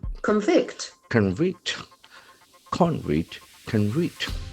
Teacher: if it is a verb the accent falls in the second syllable